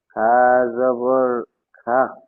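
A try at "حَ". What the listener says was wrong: হা, এটা খ নয়। একটু ওয়েট করবেন, এখানে যদি নোক্তা থাকতো তাহলে খ হতো, কিন্তু এখানে নোক্তা নাই, মানে কি হবে? হা জাবার হা।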